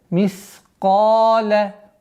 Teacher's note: Ка твердый, и алиф подчиняется твердому звуку. Каф. В размере двух огласовок.